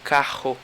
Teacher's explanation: Esse RR é como se fosse um R meio rouco.